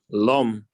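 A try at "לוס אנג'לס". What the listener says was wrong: Los. This is not mem. This is mem. This is Los.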